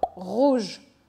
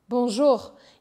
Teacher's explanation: quando é do começo de palavras ele é mais vibrante quando no final de palavras ele é menos vibrantes E no meio das palavras é como se fosse no começo